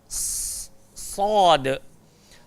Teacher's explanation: huruf sad memang sifat dia gemuk, tebal. Tempat keluar dia pula hujung lidah, langgar gigi bawah.